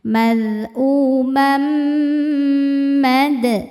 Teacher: Mad qalqalah sugra karena ada huruf qalqalah yaitu dal yang bersukun asli dan berada di tengah-tengah. Maka dibacanya memantul pantulannya kecil. · Mam ada idgham bi gunnah karena ada tanwin fathah menghadapi huruf mim. Cara bacanya tanwin ini dileburkan ke mim, masuk, kemudian tahan, dengung. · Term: idgham bighunah